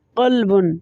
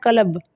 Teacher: لہٰذا اگر قلب کے قاف کو بھی کاف ہی پڑھیں گے تو اس کا ترجمہ دل کی بجائے کتا بنے گا۔ قلب کے قاف کو ہمیشہ خوب موٹا کر کے پڑھا جاتا ہے اور قلب کے کاف کو عام کاف کی طرح ہی پڑھتے ہیں